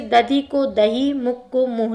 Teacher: अपभ्रंश में महाप्राण ध्वनि हा में रूपांतरित दिखाई देती है